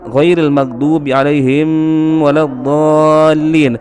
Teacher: Kemudian ayat terakhir ghairil maghdubi 'alaihim, huruf mim di situ sukun, akan tetapi ditahan oleh Habib Umar Al-Hafiz